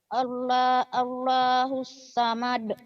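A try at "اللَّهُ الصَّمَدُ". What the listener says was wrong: Jangan Allahus samad. Samad mah ketua KPK dulu Pak Samad. Somad. Jangan.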